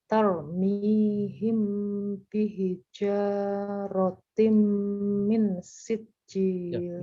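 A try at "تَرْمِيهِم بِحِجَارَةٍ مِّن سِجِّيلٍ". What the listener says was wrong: Minnya juga lama. Min sijil.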